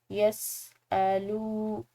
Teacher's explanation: آیت مبارکہ دیکھیے، یسألونک عن الشہر الحرام، ساتھ ساتھ ہم ان کی تجوید بھی دیکھیں گے۔ یس الو، لام کے بعد واو ساکن ہے تو کلمہ کی مقدار اس کو لمبا ادا کریں گے